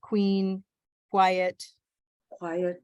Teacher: the u is like a w and the q is like a k